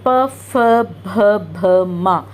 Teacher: ఇవి హోట్, లిప్స్తో ప్రొనౌన్స్ చేస్తాం. ఇది పావర్గ్.